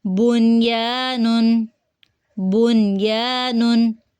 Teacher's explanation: ہم نون کی آواز کو ملانے کی بجائے ظاہر کریں گے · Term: اظہار